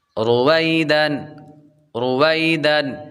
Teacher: حروف مدہ کو لمبا کرتے ہیں، حروف لین کو لمبا نہیں کرتے، تو یہاں پر یا لین ہے، لمبا نہیں کریں گے